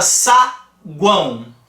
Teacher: vogais e semivogais que que tá acontecendo nessa pronúncia observa que o an é o que eu uso mais força Então esse an aqui é que é a vogal agora tanto u quanto o o são semivogais Tranquilo então a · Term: tritongo